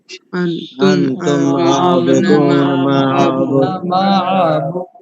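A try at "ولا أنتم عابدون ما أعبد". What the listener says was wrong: مد ہے لا انتم عابدون ما عابد، ما عبد یہاں بھی مد ہے، 4 کے برابر کھینچیں گے.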